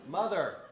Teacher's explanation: the voicing is becoming irregular on that last syllable